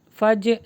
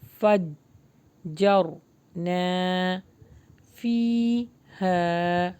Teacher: فا کو ہم جب جیم سے ملائیں گے تو پریس کریں گے کیونکہ اس کے اوپر مشدد ہے. فج نہیں پڑھنا.